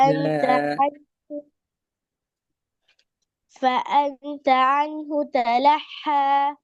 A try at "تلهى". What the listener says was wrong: அதான் அதான் தலஹங்கிறது போல, அது சின்ன ஹா. இதை நீங்க பெரிய ஹாவை வந்தீங்க, சின்ன ஹே வந்தீங்கதா? ரெண்டு மாதிரி ஓதி காட்டுங்க பார்ப்போம். பெரிய ஹா வந்தா எப்படி இருக்கிறது, சின்ன ஹா வந்தா எப்படி வரும்? சவுண்ட் வித்தியாசம். ஒன்று தலஹ, அடுத்தது தலஹ. ரெண்டு ஒண்டே சின்ன சவுண்ட். சவுண்ட் வித்தியாசம் வந்துச்சா? அதுதானே பிரச்சனை, பிழைய இப்ப வித்தியாசம் வரணுமே.